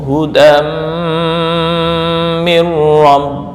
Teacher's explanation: Mim tanwin bertemu mim idgham bighunah ditahan dua sampai 3 ketukan